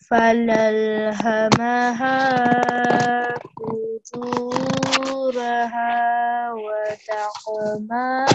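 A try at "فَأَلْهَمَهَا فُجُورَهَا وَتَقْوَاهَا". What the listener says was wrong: Okay, This is a alif here, so it's al. Fa'al, yeah. Fa'alhamaha fujuraha wa taqwaha.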